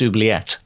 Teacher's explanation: with the stress on the final syllable. I used to think it was oublié in actual French, but it's not.